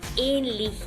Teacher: si a la H lo acompaña una vocal antes, esta vocal será larga y la H será tácita. Por ejemplo, la palabra ähnlich, que significa similar o parecido.